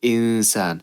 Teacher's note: I'm not going to pronounce this noon entirely by saying insan, but I'm not going to completely get rid of it by saying isan. I'm going to say, stay kind of in between insan. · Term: ikhfa